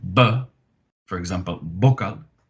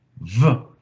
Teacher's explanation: you're pressing your teeth against your bottom lip and you're pushing the sound out with the vocalization